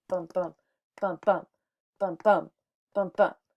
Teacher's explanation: five feet of one unstressed and one stressed syllable